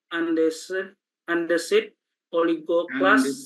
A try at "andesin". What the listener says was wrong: Andesin. Coba ulangi, andesin, jangan andesit, nanti jadi batuan. Andesin.